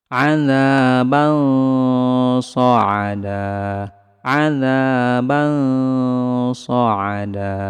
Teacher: Karena huruf shad adalah huruf tebal, maka samarnya lebih ditebalkan sedikit.